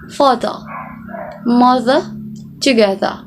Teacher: leave the r out completely omitted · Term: r sound